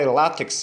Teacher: a palavra é paroxítona sílaba mais forte é o lá